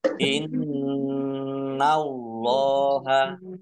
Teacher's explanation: Innallaha tasdid dibaca gunnah atau mendengung, ditahan dua harokat biar tampak dengungannya. Allahnya dibaca tebal karena harokat di depannya fathah.